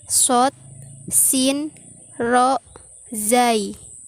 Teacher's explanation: Konsonan alveolar adalah bunyi yang dihasilkan oleh berdekatannya atau bersentuhannya ujung lidah dengan gusi atas